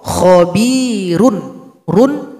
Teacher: karena didahului Ya Sukun maka dia dibaca tarqiq atau dibaca tipis